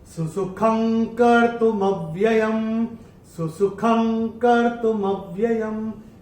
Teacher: चौथे चरण में ख के ऊपर अनुस्वार के बाद का अक्षर है क, और अनुस्वार के बाद जब क आएगा तो अनुस्वार का उच्चारण होगा अंग